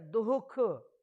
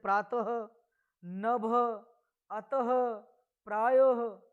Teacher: इसी प्रकार विसर्ग की बात करें तो विसर्ग के चिन्ह में हम वर्टिकल रूप से डबल डॉट का प्रयोग करते हैं, और इस विसर्ग का जो उच्चारण है वो ह के तरह से किया जाता है